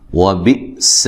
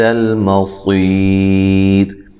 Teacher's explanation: یہاں حمزہ کو تحقیق جھٹکے سے ادا کرنا ہے. سین کو باریک سیٹی سے، صاد کو موٹی سیٹی کے ساتھ ادا کرنا ہے. صی یا مدہ ہے.